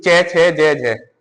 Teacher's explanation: चे छे जे जे का जब उच्चारण करोगे जीभ कहां टच हो रही है आपके, हमारी तालु से टच हो रही है सीधी। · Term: तालव्य